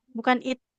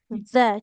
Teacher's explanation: Ujung lidahnya nempel ke ujung gigi seri atas ya.